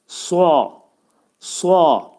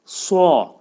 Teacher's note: Bu hərf bir qədər, bir qədər yox, ümumiyyətlə dolu şəkildə tələffüz olunur. Dilin kökü yuxarı qaldırılaraq sua deyilməyinə çalışmaq lazımdır. So. Sua şəklində ifadə edirik.